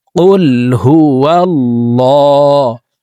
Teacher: আল্লাহ শব্দের আগের হরফে জবর অথবা পেশ হইলে এই লামকে ল অর্থাৎ মোটা করিয়া পড়িতে হয়